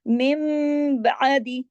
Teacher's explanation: होगा और उसके फौरन बाद जहां कहीं भी बा होगा तो नून की आवाज मीम में बदल जाएगी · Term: इक़लाब